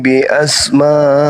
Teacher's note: jadi Nun dipalingkan menjadi Ba Gak ada huruf nun di situ hilang dia menjadi huruf ba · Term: iqlab